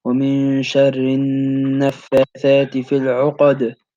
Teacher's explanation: The noon has a shadda, which makes you have to do that nasal sound for two counts.